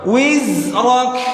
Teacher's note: jangan wiz karena nggak boleh mantul. Jangan mantul kalau bukan huruf qalqalah.